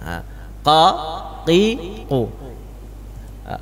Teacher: Pangkal lidah kalau qaf bertemu dengan langit-langit atas yang berdaging. Ya, belakang sekali Pak, masih berdaging dia.